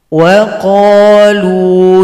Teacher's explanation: karena wawunya polos maka dipendekkan